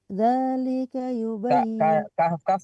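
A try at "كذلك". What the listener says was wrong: kafnya dibaca kadzalika.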